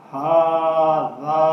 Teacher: اب اس میں دونوں حروف کو ایک الف کی مقدار لمبا کر کے پڑھنا ہے